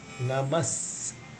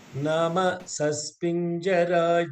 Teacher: You should not say Nama Saspinjara, then that means you are losing the Visarga.